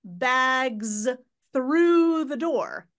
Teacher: that z sound that voicing of the Z kind of might be buried in in that consonant cluster